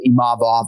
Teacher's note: So it's really just about emphasizing that second syllable